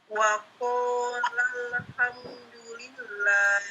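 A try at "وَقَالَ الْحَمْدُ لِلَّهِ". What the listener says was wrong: Le-nya hilangkan. Wa qala alhamdulillah.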